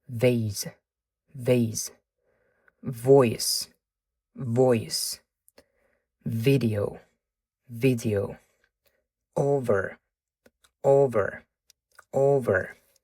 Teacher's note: V tovushiga qarasangiz, bu yoqda aynan yuqori tishlar pastki labga tegganda hosil bo'lyapti. Makhraj deymiz, tovush chiqayotgan joyi.